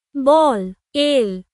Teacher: Your tongue stays up behind your top teeth for the L sound.